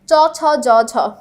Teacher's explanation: কোন ব্যঞ্জন ধ্বনি বর্ণসমূহের উচ্চারণ স্থান অগ্রতালু, সামনের তালু দিয়ে আমরা উচ্চারণ করছি কি চ ছ জ ঝ, আমাদের সামনের জিভের সম্পূর্ণ অংশটা লাগছে, ঠিক আছে, তালুতে